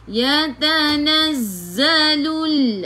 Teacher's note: Sifat hurufnya safir, kena bunyikan z. Macam bunyi lebah.